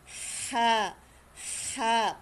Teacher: hinihingal ' ba pag hinihingal ka sa kakatakbo gaganon ka pero yung tunog niya hindi galing sa diaphragm hindi galing sa dibdib hindi galing sa tiyan kundi ito ay nanggagaling sa lalamunan